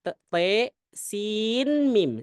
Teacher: Sin jadi nunnya jelas. Sin mim dibaca izhar.